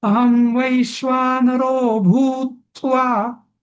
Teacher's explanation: भूत्वा असं आपण नाही तर हा भू दीर्घ म्हणायचा आहे, पण दीर्घ झाल्यानंतर जोर द्यायचा.